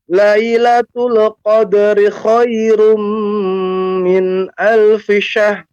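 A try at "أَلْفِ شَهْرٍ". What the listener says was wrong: Nah, ini untuk syah. Ketika Bapak mengucapkan syah, roknya mana? Ya, berarti kurang roknya, hilang. Makanya pengucapannya min alfi syahr. Syahr. Syahr. Nah, min alfi syahr. Ucapkan dulu sempurna pengucapan haknya. Alfi syahr. Di ujungnya baru diberikan r, ya. Alfi syahr.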